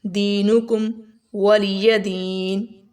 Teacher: یہاں پر دی کو لمبا کریں گے، یا مدہ ہے یہاں پر، یا ساکن سے پہلے زیر ہے، دِينُكُمْ وَلِيَ دِينِ، وَلِيَ دِينِ، حرکت کو لمبا نہیں کرنا، زبر زیر پیش کو لمبا نہیں کرنا، ٹھیک ہے؟